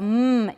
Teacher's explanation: the two lips are together right upper lip and lower lip are together to make my · the velum is down it's open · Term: bilabial nasal stop